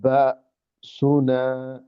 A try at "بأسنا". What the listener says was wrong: এই যে বা, এটা অনেকটা আইনের মতো হয়ে গেল। এটা খুব হালকা। কিন্তু এইটা উচ্চারণটা ওরা ভুল ধরবে। আমাকে উচ্চারণটা করতে হবে খুব হালকা একটা, হালকা ভাষা, ভাষা একটা পুশ মনে করেন, আমি ধরেন আপনাকে হালকা একটা পুশ করলাম। এই দেখেন, জাআহুম বাসুনা, বা, বা, বা এরকম।